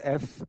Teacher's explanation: f if produce f and sustain it you will feel that the lower lip the lower lip touches the upper front teeth